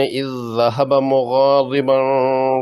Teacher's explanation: پہلی اذ ذہبہ میں دو ذال اکٹھے ہیں، پہلا مجزوم اور دوسرا مشدد، یہاں مشدد کو پڑھا جائے گا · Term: ادغام مثلین